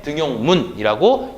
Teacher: 그리고 뒤에 있는 말이 지금 요, 그러니까 이, 오가 합쳐진 이중모음인데요. 그럼에도 불구하고 니은 첨가가 적용되지 않습니다. 그렇기 때문에 등용문이라고 이야기를 한다는 거죠.